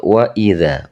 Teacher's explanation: Panjangnya cukup satu alif atau dua harokat. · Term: Mad tabi'i